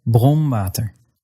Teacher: N or m before a f or a v or a w sound will be made using your bottom lip against your upper teeth, as in bronwater.